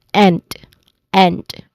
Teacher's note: It includes a short e vowel, as in bed. So your jaw is hanging.